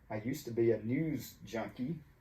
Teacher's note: I used to be, to gets reduced to ta.